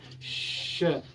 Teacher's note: जो जिह्वा है ऊपरी भाग में सटाते हैं, उसके बाद जो हवा निकलती है, वायु निकलती है, वो थोड़ा संघर्ष करते हुए निकलती है। श बोलने में देखिए श, थोड़ा सा इसको संघर्ष करना पड़ रहा है, इसीलिए इसे संघर्षी व्यंजन कहते हैं।